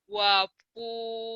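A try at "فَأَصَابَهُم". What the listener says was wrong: titiknya satu bukan dua.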